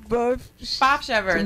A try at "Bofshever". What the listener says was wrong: The F is not silent.